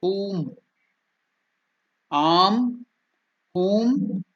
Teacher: The U is elongated, that is dirgha